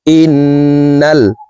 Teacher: হরকতের বামে নুনে মিমে তাসদিদ হইলে সর্ব অবস্থায় নাকের বাসি থেকে গুন্নাহ করিয়া পড়িতে হয়। তো এই হামজা তাসদিদওয়ালা নুনের সাথে 3 সেকেন্ড পরিমাণ গুন্নাহ করে ধরে রেখে পড়ব। দেখুন এইভাবে পড়তে হবে, হামজাহ নুন জের ইন, নুন লাম জবর নাল, এই নুন জজমওয়ালা লামকে ধরবে, ইন্নাল।